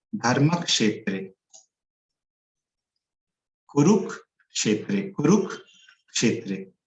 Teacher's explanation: पहला तो ये जो आधा क जो देख रहे हैं हम लोग वो, और दूसरा ये जो श है, तो ये आधा क और ये मूर्धन्य श, तो ये बन जाता है क्ष · ये श जो है ये मूर्धन्य श है